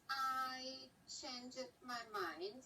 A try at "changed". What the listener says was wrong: I changed. I heard the E.